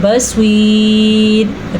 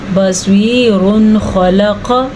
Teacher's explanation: اگر ہم یہاں پہ وقف کریں گے تو را باریک پڑھی جائے گی، اگر ہم وقف نہیں کریں گے تو را پر پڑھی جائے گی